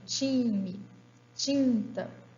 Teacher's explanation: ocorre como TCHA diante de I e suas variantes